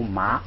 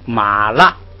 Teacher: 后边的动词如果是这个降调的，这个马就读升调。 这个马就读升调，就是你比如说拉是这个升降调，不是高平调。前边的马呢就读它的原调，就读麻，就读这个2声升调。马拉这是连读，马拉是连读，也可以不连读，就是马拉。这是一